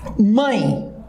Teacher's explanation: Então aqui, esse mãe tem um E, tem o som de I. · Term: ditongo decrescente nasal